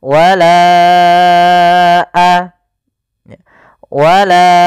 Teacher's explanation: maka kita namakan dengan mad jaiz munfasil. Maka kita panjangkan huruf la-nya sepanjang 4 harokat atau 5 harokat. · Panjangkan la-nya dulu 4 harokat baru lepas.